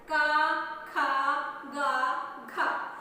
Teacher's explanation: क बोलते हैं तो हमारा कंठ से उच्चारित होता है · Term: क वर्ग